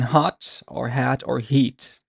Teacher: it's a voiceless glottal fricative